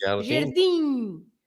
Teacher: So the sound is the I. The last sound is the I, but it's a nasal I.